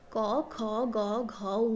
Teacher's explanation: कंठ वर्ग मतलब कंठ से निकलता हुआ धुन कंठ वर्ग क ख ग घ व कंठ वर्ग को क